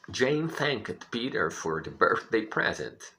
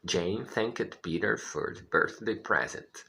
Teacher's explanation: Um detalhe interessante na palavra thanked é que a segunda vogal ela não se pronuncia. É uma espécie de silent letter, que assim chamamos, ok?